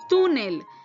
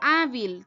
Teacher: Las palabras graves o llanas, pues el acento está en la penúltima sílaba. Y cuando van a recibir su acento ortográfico, van a recibir su acento ortográfico cuando terminen en una consonante, excepto N o S.